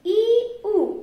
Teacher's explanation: এই 2টি স্বরধ্বনি যখন উচ্চারণ করব তখন জিহ্বাটা আমাদের একটু উঁচুতে অবস্থান করছে, ই, উ। এই জন্য এই 2টি স্বরধ্বনিকে বলা হয় উচ্চ স্বরধ্বনি।